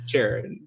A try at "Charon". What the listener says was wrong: Charon. it's spelled CH. Like it's a Greek hard K sound.